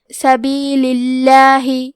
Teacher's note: کلمت سبیل کے آخری میں لام کے نیچے زیر ہے تو یہاں بھی لفظ الجلالہ کے لام کا حکم ہے ترقیق، تو ہمیں حرف اللام کو پتلی آواز میں پڑھنا ہے.